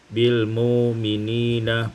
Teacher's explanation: ibdalul hamzati waw, ditukar hamzah dengan waw menjadi bil mu'minina